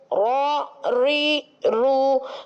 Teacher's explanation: پشت لسان جب مقابل کے تالو سے لگتی ہے تو حرف را ادا ہو جاتا ہے